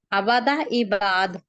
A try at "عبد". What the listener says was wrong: عبادہ نہیں ہے، عبد ہے، عبد، عبادہ نہیں ہے، عبد، عباد، ٹھیک ہے۔ ہمیں اب نے تھوڑی دیر پہلے بات کی ہے نا، عبد عبداللہ۔